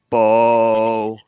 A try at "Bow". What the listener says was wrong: No, a little higher.